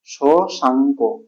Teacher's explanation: এবারে শশটাকে ভাঙলে কি হবে, শশ অ, শেষে গিয়েছে অ। এই শশ এর শেষ স্বর অ যুক্ত অঙ্ক এর প্রথম স্বর অ, এই দুটো অ যুক্ত অ মিলে কি হয়েছে, আ হয়েছে, আ হয়েছে। এখানে দেখো শশাঙ্ক, এখানে আকার যোগ, এখানে আকার যোগ হয়েছে।